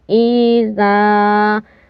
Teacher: زال کے ساتھ الف ہے تو یہ الف مدہ ہوگا، ہم کھینچیں گے تھوڑا۔